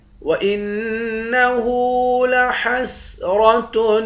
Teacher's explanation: حمزے کو نون مشدد کے ساتھ ملا کر نون پر غنہ کریں گے۔